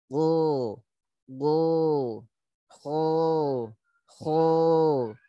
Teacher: persentuhan akar lidah dengan lak-lakan